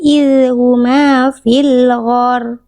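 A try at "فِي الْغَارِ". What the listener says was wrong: Ginnya panjangkan sedikit lagi.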